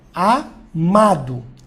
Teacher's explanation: Se a palavra, por exemplo, ó, tiver a tônica na penúltima, ó, amado, ela vai ser paroxítona.